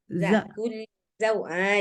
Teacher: Jangan sampai kayak zal dia. Jangan terlalu lemah. Kalau lemah dia jadinya kayak huruf zal. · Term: huruf zai